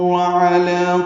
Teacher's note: اعلیٰ میں لام کو 2 حرکات لمبا کرنا ہے